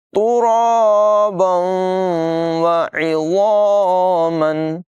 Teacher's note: वकुन्ना तुराबन वइज़ामन, रा को पुर अदा करेंगे। तनवीन के बाद वाव हरूफ़ यरमालून में से है, मिलाकर पढ़ेंगे, इदगाम और गुन्ना करके पढ़ेंगे